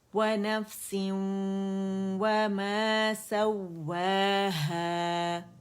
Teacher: مد اصلی بن رہی، 2 کاؤنٹس کے لیے آواز اوپر جائے گی، وما میں بھی اور ہے میں بھی